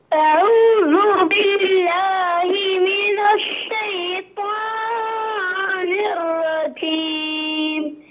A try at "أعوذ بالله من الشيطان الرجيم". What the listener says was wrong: لا تقول الشيطان، ها لا تقول الشيطان، لا تمد، من الشيطان الرجيم.